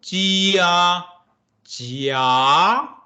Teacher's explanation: The second tone, Jia, Jia, with the rising trend